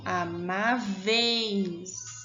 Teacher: A vogal é o E, eu vou falar ela mais forte. E a semivogal, que é o I, eu vou falar mais fraquinho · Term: ditongo